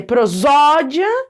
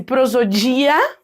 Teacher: Então, por exemplo, uma pessoa que lê prosódia, deixando bem forte o zó, porque é a sílaba tônica da palavra, ela tá tendo uma prosódia adequada.